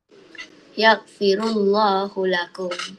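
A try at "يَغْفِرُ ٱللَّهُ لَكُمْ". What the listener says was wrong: Lafzul jalalah kena baca panjang sedikit. Allahu lakum.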